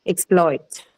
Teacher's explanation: So exploit then can have two different stress patterns depending on what it is used as. Okay, so if it is used as a verb, the stress is on the second syllable